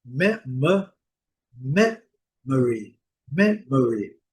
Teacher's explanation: O O com som clássico do schwa. Esse som preguiçoso.